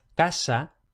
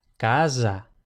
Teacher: Y esto simplemente lo pongo porque también dependiendo de la lengua nativa del hablante puede pasar que la s cuando va entre dos vocales se pronuncie sonora. Es decir, en español decimos casa, pero esa misma palabra en italiano o en catalán sería casa.